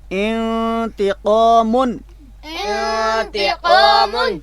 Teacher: نون اصلی کی بھی مثال دیکھ رہے ہیں جو غنہ کے ساتھ پڑھی جا رہی ہے